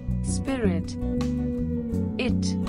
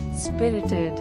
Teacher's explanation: three syllables and the emphasis on first syllable